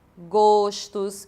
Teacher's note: palavras que têm a vogal tônica fechada O, que de fato elas não sofrem uma metafonia, o O continua sendo fechado